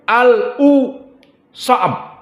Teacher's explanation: Di mana al berakhir di makhrajnya lam, torful lisan, bertemu dengan u. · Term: saktah